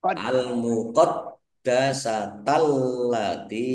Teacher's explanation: [Musik] Almuqaddasata alif lamnya juga alif lam qamariah ditandai lamnya dibaca sukun. Dalnya dibaca dobel ada tasdidnya ditekan biar tampak dobelnya.